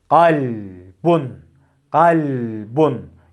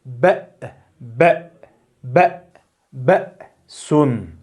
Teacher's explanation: hem sesi kalkale yaparmış gibi patlatıyor hem de sonraki harfe bir sekte uyguluyoruz